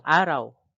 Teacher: Patinig na A at sinundan ng malapatinig na W. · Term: diptonggo